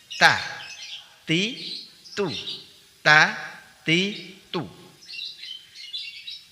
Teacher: Huruf ta keluar dari ujung lidah dari arah punggungnya dan menempel pada gusi dua gigi seri atas.